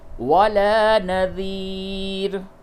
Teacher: را کو باریک کر کے پڑھیں گے کیونکہ رائے موقوفہ سے قبل یا ساکن ہے